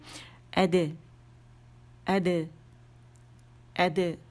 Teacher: اب دال ہے، اس کا قلقلہ باریک ہونا چاہیے